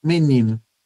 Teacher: A gente pronuncia esse O final como U, né? Aí sim passa para esse som que se assemelha a semivogal.